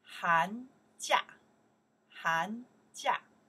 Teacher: 寒, second tones, 假, fourth tones